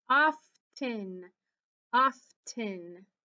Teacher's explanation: so you do say the f and the t sounds